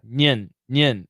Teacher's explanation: It's an N-Y schwa N